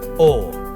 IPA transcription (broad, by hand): o